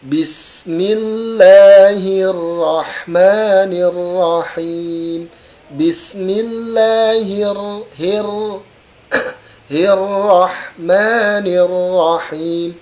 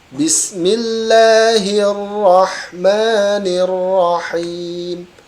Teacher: tetapi tidak dengan memajukan dua bibir maksimal getaran berapa maksimal adalah 2 kali getaran inilah pengucapan huruf ro dalam sifat taqrir